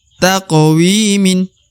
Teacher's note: Salah satu huruf qalqalah dari 5 huruf qalqalah atau huruf pantul ya. Huruf qaf yang sukun adalah huruf qalqalah atau huruf pantul ya. Maka dibaca taqwimin.